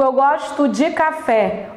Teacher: olha a pronúncia, até um dizinho fraquinho. Não é verbo, ele é átono.